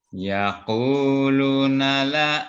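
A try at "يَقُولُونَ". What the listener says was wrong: Yaqulu, lu-nya dibaca panjang.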